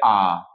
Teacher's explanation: এই বাগযন্ত্রের যে ছবিটি আমরা প্রথম ক্লাসেও আজকেও একবার ব্যবহার করলাম সেটা হচ্ছে যে বাগযন্ত্রের এই ছবিটির মধ্যে আমরা দেখতে পাব কেন্দ্রীয় স্বর কোথায় থাকবে কেন্দ্রীয় স্বর থাকবে আ এই আকে বলা হয় কেন্দ্রীয় স্বর কাজেই আ হচ্ছে বিবৃত আ হচ্ছে ওপেন আ হচ্ছে তোমার কেন্দ্রীয় বা মধ্যস্বর